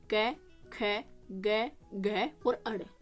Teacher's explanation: तालू का थोड़ा बहुत यूज करते हो इसमें और मोस्टली इसको कंठ से बोलते हो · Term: कोमल तालव्य